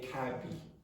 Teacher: Instead of cab, you might hear a Brazilian say kabi.